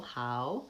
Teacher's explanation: example before words that have that end with a letter L we often have a hidden sound in American English where we put the vowel schwa in there